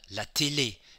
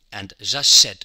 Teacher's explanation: And we had la télé, it was very closed. And j'achète, it's very open.